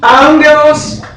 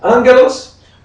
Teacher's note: quando eu tenho um duplo gama, ele nasaliza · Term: nasalizar